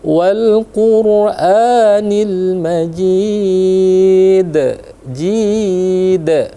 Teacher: jadi dipantulkan, dibesarkan karena di akhir dia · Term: Qalqalah kubro